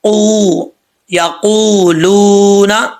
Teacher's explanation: زبان کی جڑ اوپر والے نرم تالو سے لگے تو پھر جو ہے یہ قاف صحیح طریقے سے پڑھا جاتا ہے